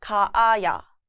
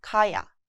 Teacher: So we changed the form by adding 아야, making it 가아야. However, when two identical vowels like a and a meet, they're contracted to sound more natural. So 가아야 becomes 가야.